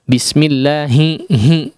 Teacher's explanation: Bukan ha yang besar ya, tapi ha yang keluar dari pangkal tenggorokan ya, bukan yang di tengah tenggorokan. Huruf ha yang keluar dari pangkal tenggorokan ini terkadang atau agak rawan untuk diiringi khayshum, ya, diiringi dengan suara dari hidung, hi, ya.